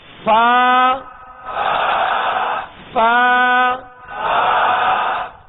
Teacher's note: اوپر کے سامنے والے دو دانتوں کے کنارے اور نچلے ہونٹ کا تر حصہ